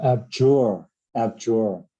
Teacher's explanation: abjure, and the stress is on the second syllable. It's on the second syllable.